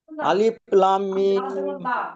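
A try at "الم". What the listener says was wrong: টান দিয়ে পড়েন, টান দিয়ে পড়েন, টান দিয়ে পড়েন। আপনি টান তো দিলেন, কিন্তু মিমের উপরে গুন্নাটা কে করবে চাচাজি?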